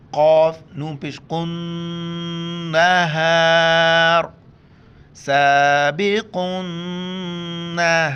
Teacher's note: قاف موٹا کر کے پڑھیں گے نون کے ساتھ ملائیں گے اور نون پر غنہ کریں گے